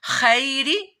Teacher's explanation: وَإِنَّهُ لِحُبِّ الْخَيْرِ خا یا زبر خی یا ساکن سے پہلے زبر آ رہی ہے تو یہاں پر اس کو لمبا نہیں کیا جائے گا. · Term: یا لین